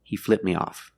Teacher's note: between consonants you don't really hear it he flipped me off the tongue goes up a little bit but you don't hear the T sound